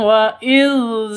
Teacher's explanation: za panjang 2 ketukan karena ada alif diawali dengan fathah atau alif sebelumnya fathah, mad asli atau mad tabi'i.